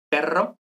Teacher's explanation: para decir perro pues son como dos o tres golpecitos muy rápidos · Y luego, una vibrante, antiguamente, bueno, vibrante múltiple, son 2 o 3, normalmente 2 o 3, entonces, para decir perro, pues son como 2 o 3 golpecitos muy rápidos